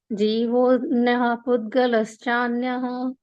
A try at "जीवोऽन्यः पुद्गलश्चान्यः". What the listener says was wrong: चान्य में विसर्ग नहीं है। जीवोऽन्यः पुद्गलश्चान्य, पुद्गलश्चान्य